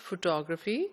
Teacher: the correct pronunciation is photography the stress is on the second syllable